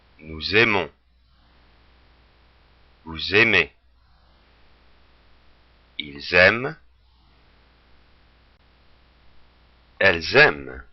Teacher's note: when we have the S at the end of nous, vous, il, elle, we make the liaison. We make that S heard. And particularly with il and elle, it allows us to make the difference between if we're talking about just one person or a group of people.